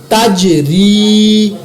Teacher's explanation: تا زبر جیم تج، را زیر یا ری، تج ری، یہاں پر میں نے جیم پر قلقلہ کیا، را کو میں نے باریک پڑھا کیونکہ را کے نیچے زیر آ گئی ہے، زیر کی وجہ سے را کو باریک پڑھیں گے۔